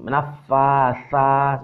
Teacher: tha ini hampir sama dengan ta, tapi dia lebih keluar anginnya lebih banyak.